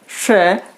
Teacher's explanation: जीभ के आगे का भाग मूर्धा को स्पर्श करता है, इसलिए हम इसे मूर्धन्य से भी बोल सकते हैं।